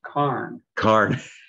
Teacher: we used to pronounce our ORS like ARS